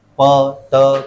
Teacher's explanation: और वॉइसलेस क्या होता है, वॉइसलेस साउंड्स में क्या होता है कि produced when the vocal cords are apart, दोनों वोकल कॉर्ड्स दूर दूर है, दूर है और हवा उसमें से गुजर रही है, तो कोई वाइब्रेशन ज्यादा होता नहीं